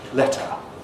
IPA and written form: ˈletə (letter)